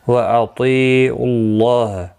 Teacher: اللہ کا لام پیش کی وجہ سے پر پڑھا جائے گا، اس کے اوپر کھڑی زبر بھی ہے، ایک الف کی مقدار کے برابر کھینچ کر پڑھیں گے۔